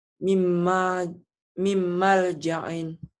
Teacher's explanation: Harus melebur dan disertai dengan dengung. Ditahan ya. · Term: Idgham bigunnah